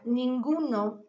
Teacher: se produce mediante el aire de la nariz es alveolar a través de este órgano y es sonoro así podemos clasificar